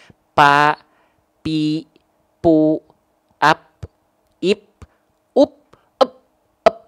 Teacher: kalau P itu bibir atas dan bibir bawah yang nempel